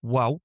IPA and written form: wæʊk (WALK)